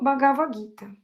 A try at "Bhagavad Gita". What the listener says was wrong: Bhagavad, tem um D aí no final. Bhagavad